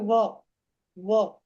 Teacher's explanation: दंतोष्ठ है दंतोष् दांत और ओष्ठ दोनों लगेंगे